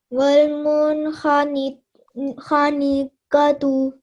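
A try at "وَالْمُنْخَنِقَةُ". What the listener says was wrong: Excellent, well done, really nicely read.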